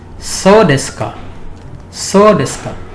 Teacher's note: It is pronounced with a falling intonation. This is the most important part, the falling intonation.